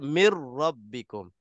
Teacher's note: dari segi bacaan Zahir bacaan kita seolah-olah Nun itu hilang dimasukkan sepenuhnya · waktu kita baca daripada mim terus kita lompat masuk ke ra seolah-olah Nun itu tak ditulis pun tak apa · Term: Idam Kamil